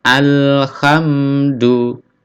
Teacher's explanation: tidak ada pantulan di sini ya, karena bukan huruf qalqalah